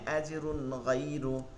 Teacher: তানভিন এরপরে গইন হয়েছে, এর জন্য গুন্না হয় না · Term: ইজহার